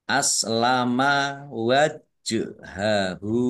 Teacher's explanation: Jim sukun bacaan qalqalah dibaca memantul ditampakkan pantulannya.